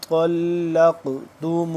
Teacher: اب دیکھیں یہاں پہ حمزہ نون زیر ان، نون یہاں پہ ساکن ہے تو اس پہ ہم اخفا کریں گے، اور آگے طلق، طوا موٹا کر کے پڑھیں گے، طوا پلس آگے ہو رہا ہے لام کے ساتھ، طوا لام زبر طول، لام قاف زبر لق، لام جب قاف کے ساتھ مل رہا ہے تو قاف کے اوپر شادہ یعنی قاف ساکن ہے، تو اس کو ہم قلقلہ کریں گے، حروف قلقلہ میں سے ہے قاف، تو یہاں پہ ہم قلقلہ کریں گے۔